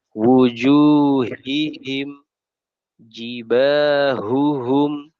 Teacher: harus dinampakkan terutama sifat Hames udara dan rakhawahnya yang mengalir